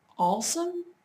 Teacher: My fiance from South Carolina says awesome like awesome. He kind of puts an L in.